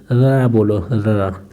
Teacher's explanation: तो ये जीभ जो है लुंठित बेलनाकार बन जाती है बोलते टाइम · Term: लुंठित व्यंजन